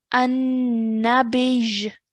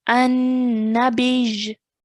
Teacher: So how we're going to pronounce this when we're pausing this word is an-nabij. We're joining the ba to the ya mushaddad. Okay, so really press down on the ya mushaddad. An-nabij. Okay, some people sometimes think that this is now a ya mud because it's a ya sakin and the letter before carries a kasra, but we must look at the fact that there is a shadda there as well.